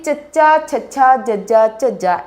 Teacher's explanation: अगे है जी चच्चा छच्छा जज्जा झज्जा, इन्हां दे उचारण वाले साडी जीभ है जिहड़ी सख्त तालू नूं छूंहदी है, हवा नूं रोकदी है और छड्डदी है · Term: तालवी धुनियां